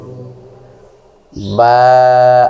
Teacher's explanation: বা হরফটি 2 ঠোঁট মিলিয়ে ভিজা স্থান থেকে উচ্চারণ করতে হয়।